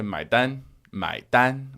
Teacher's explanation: if you say mai dan with the first tone, everyone understands that. That is the way that most people ask for the bill.